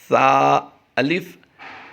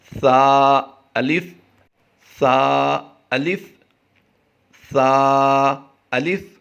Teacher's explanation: زبان کا سرا اور اوپر کے دانتوں کے اندرونی کنارے سے یہ ادا ہوتا ہے